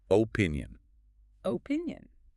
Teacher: The stress is right in the middle. On the pin.